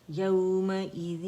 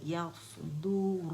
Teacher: یا باریک ہے، اور صاد موٹا ہے